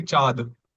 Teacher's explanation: If you remove that nasal sound it would be chad.